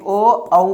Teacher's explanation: उसके बाद है ओ दौतो कंठोष्ठ, ओ दौतो कंठ ओष्ठ, यानी कि ओ औ का उच्चारण कहाँ से हो जाएगा? कंठ ओष्ठ से